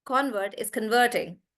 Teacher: However, when he is doing the action of converting, then we say the convert is converting. So then the stress is on vert.